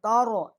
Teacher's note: تا کو ہم باریک پڑھیں گے، را کو ہم موٹا پڑھیں گے